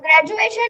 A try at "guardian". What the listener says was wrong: Guardianation नहीं. Guardian.